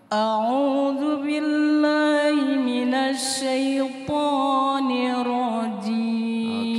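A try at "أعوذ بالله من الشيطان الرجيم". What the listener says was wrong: Oke, minasyai, jangan minasyai, bibirnya ndak usah maju. Minasyai. Syai bukan syai. Minasyai.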